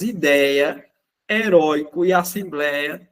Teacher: Elas têm em comum que a sílaba tônica é um ditongo aberto.